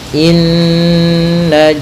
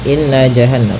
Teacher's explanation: Pada bacaan inna di sini ada hukum tajwid yaitu gunnah, yaitu cara membacanya adalah kita menahan suara nunnya ya terlebih dahulu sepanjang 2 harakat lebih sedikit ya, kemudian baru kita baca janya.